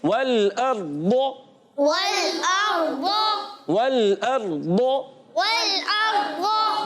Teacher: नाजिस से दाहिक तक के मसूड़ों में, नाजिस से दाहिक तक के मसूड़ों में जब ज़बान की करवट लगती है तो अदा होता है दौद।